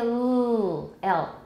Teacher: the tip of the tongue is touching your alveolar ridge · we have a very smooth flow of air from the two sides or sometimes it's one side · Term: laterals